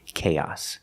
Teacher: And the final S makes a true S sound, S, with no voice.